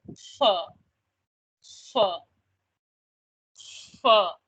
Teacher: the air releases from around your teeth as you're saying fur